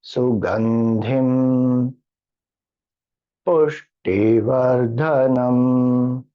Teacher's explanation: Pu goes up, T goes down, Dha goes up. · Then Su, no intonation. Ga is down, as a horizontal line below.